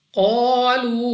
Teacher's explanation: قاف مستعلیہ میں سے ہے, موٹا پڑھنا ہے. الف سے پہلے زبر الف مدہ 2 سیکنڈ تک لمبا کریں گے